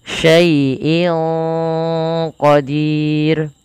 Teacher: disamarkan suara innya kepada qaf, dan dia qaf termasuk salah satu huruf yang dia pangkal lidahnya terangkat, teman-teman. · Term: huruf ikhfa